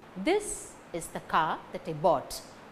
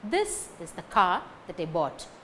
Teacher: This car bought. These three words gain stress. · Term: sentence stress